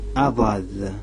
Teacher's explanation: D avec un petit point en bas. C'est un D qui se dit emphatique.